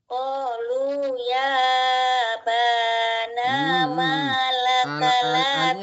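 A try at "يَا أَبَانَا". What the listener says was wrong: Hamzahnya nggak dibaca. Hamzahnya dibaca juga. Ya abana, ya abana. A-nya jangan sampai dibuang. Jangan langsung ya bana, jangan. Tapi ya aba. A itu harus jelas dibacanya jahar. Abana gitu.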